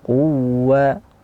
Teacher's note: didorong suaranya nabar, dorongan suara lebih daripada suara yang seperti biasanya. Quwwa diberi sedikit dorongan, dia ataupun waw yang bertasydid seperti ini, quwwa.